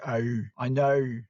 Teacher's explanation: You just gotta get everything almost up into the tip of your nose, and just also the long O sound. There's an R in there somewhere and a W, like an OW.